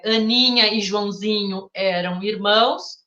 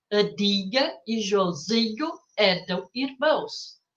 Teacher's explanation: deixar os sons nasais da nossa língua com pouca nasalização